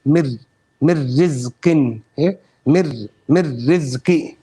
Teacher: So when you say the r, it's natural for the little slight roll of the tongue. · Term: taqreer